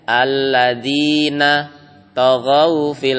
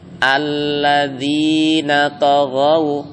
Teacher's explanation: Nah, dari na ke to itu enggak ada jeda.